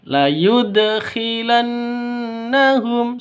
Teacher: harus digaungkan pada huruf dal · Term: qalqalah sughra